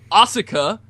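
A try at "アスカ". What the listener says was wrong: The U in Japanese is silent, like Shinsuke, Sasuke, Asuka.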